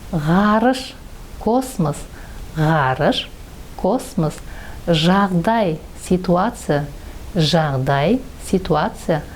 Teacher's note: звонкий согласный звук при произношении звука задняя часть языка приближается к заднему краю неба и воздух проходит между ними